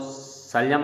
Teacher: जो शलम वाला स होता है इसका उच्चारण होता है तालु से